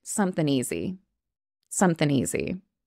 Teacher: it's actually something but we're dropping off the G that's very common in spoken English